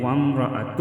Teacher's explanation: وقف کی صورت میں وامرأتہ ہوگا، ہا ساکن ہوگا